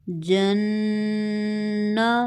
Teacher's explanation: 2 second کے لیے آواز کو ناک میں رکھیں گے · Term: غنہ